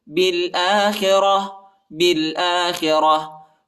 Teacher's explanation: حمزہ پر کھڑا زبر آیا ہے، اس کو ایک الف کی مقدار تک کھینچیں گے، اور تا کو وقف کی صورت میں ہا پر تبدیل کریں گے۔